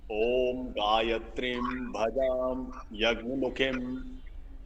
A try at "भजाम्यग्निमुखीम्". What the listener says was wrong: मुखीम यहाँ दीर्घ है ख मुखीम। ओम गायत्रीं भजाम्यग्निमुखीम्। गायत्री में भी दीर्घ है गायत्रीं भजाम्यग्निमुखीम्।